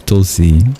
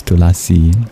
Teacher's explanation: In Hindi, the schwa is dropped and becomes Tulsi, but in Sanskrit it's Tulasi